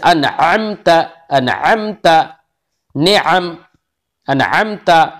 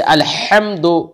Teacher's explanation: درمیانی حلق سے عین اور ہا ادا ہوتا ہے